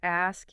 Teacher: your vocal cords don't vibrate on the K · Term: unvoiced sound